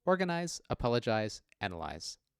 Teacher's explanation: The words are pronounced with a voiced Z sound, regardless of their spelling, and again, this difference is purely visual.